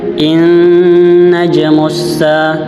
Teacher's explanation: Nah, pada ayat ketiga ini terdapat gunnah di awalan surah At-Thariq ayat ketiga, yang dimana dia nun bertasdid dengan harokat fathah dan dia harus ditekan